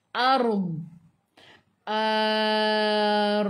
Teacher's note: Lepas tu kita nak matikan dengan huruf dad. Huruf dad ni tepi lidah menyentuh gigi gerham atas.